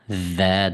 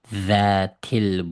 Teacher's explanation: tilimizni o'chini tishlab turib chiqirg'on harf bu za